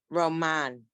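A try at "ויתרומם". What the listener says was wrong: It's not a nun. That's a final.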